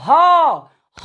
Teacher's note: पूरी स्वर तंत्रियां इसमें भाग लेती हैं और वायु प्रकोष्ठ से डायरेक्ट निकल जाता है, इसलिए ह का नाम है काकल्य वर्ण या स्वर यंत्र मुखी वर्ण।